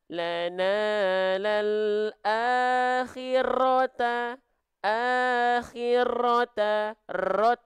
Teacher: kesalahan yang sering kali terjadi ketika kita melafalkan huruf ro adalah huruf ro dilafalkan dengan getaran yang berlebihan ya Getaran yang banyak